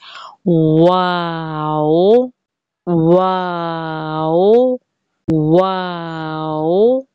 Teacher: वाओ होठों की ना तमाम गोलाई से अदा होता है यानी पहले होठ गोल होंगे और फिर फैल जाएंगे उसके बाद दोबारा से गोल हो जाएंगे और इस पर भी